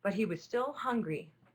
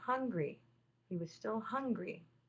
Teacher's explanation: at the end of the sentence you have strong punctuation you have a period and we show that at the end of the period of the sentence by having a downward intonation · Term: falling intonation